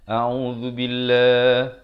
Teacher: Lafzul jalalah dibaca nipis 2 harakat.